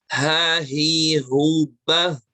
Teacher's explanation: Jadi kalau H itu muncul dari pangkal tenggorokan, suaranya ngalir kuat, ya.